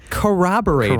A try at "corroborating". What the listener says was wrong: It's not a W.